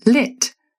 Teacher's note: you'll find that the back of your tongue will be substantially lower in RP. It's mostly just the front of your tongue that's raising up.